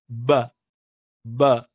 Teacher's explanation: ب دیکھیے دونوں ہونٹوں کو دور کرنے سے نکلتا ہے. ابتدا میں وہ ملتا ہے خالی ب کے ساؤنڈ کے لیے، اور اس کے بعد جو الف واو یا یا وغیرہ ہے اس کے لیے اس کو الگ ہونا پڑتا ہے، یعنی فتح ضمہ کسرہ کے لیے الگ ہونا پڑتا ہے.